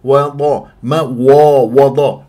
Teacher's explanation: الواو مرققه ضاد مفخمه مرتبه ثانيه مفتوحه